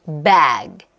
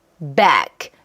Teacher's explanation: 유성음으로 끝나는 그 사운드 같은 경우는 이렇게 소리가 울리죠. 그래서 앞에 있는 모음 소리가 살짝 길어지는 느낌이 있어요.